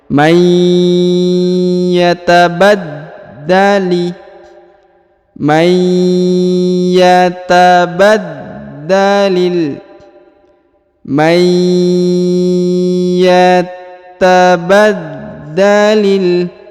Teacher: Huruf nun sukun bertemu dengan ya bertasdid. Maka dia ditahan dan ditekan, huruf nunnya menghilang dan melebur ke huruf ya.